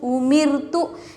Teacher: میم کے نیچے زیر رائے ساکنہ کو باریک پڑھیں گے